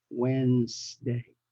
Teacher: I want to stress the word Wednesday, and some people pronounce it as Wednesday because of the D, but the D there is silent, so don't pay attention to it. How you say it is start with the sound when, like when will we leave?